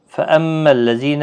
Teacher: خیال رکھیں زال نرمی سے پڑھا جائے گا